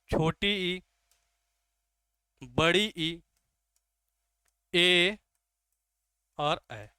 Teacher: जीभ के अगले भाग से बोले जाने वाले स्वरों को क्या कहते हैं? अग्र स्वर कहते हैं।